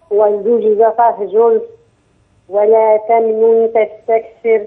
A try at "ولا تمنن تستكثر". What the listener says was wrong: الغنه ناقصه.